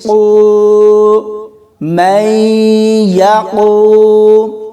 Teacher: اس کے بعد قاف کو واو کے ساتھ ملائیں گے اور یہاں واو مدہ ہوگا، کیونکہ واو ساکن سے پہلے حرف پر پیش ہے، تو اس کو کھینچ کر پڑھیں گے